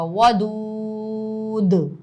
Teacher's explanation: دال پر آگے جا کے قلقلہ ہوگا، واو مدہ تو کھنچے گا ہی لیکن دال پر قلقلہ ہوگا